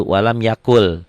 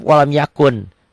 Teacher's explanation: N-nya melebur masuk ke lam ya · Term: idgham bila gunnah